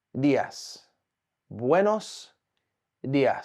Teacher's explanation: the D is soft so what you want to do is put your tongue just behind your teeth your top teeth and say Di buenos di not buenos di buenos the D